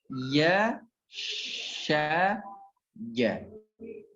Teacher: ya tidak terlalu atas, ya, sya lebih atas sedikit, jim tempelkan ke langit-langit.